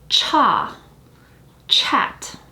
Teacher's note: for CH, it's an aspirated consonant, which means that you will feel that burst of air.